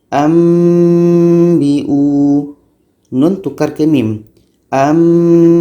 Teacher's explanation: kalau kita buat bunyi nun mati tanwin ini kita ubah kepada bunyi mim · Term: iqlab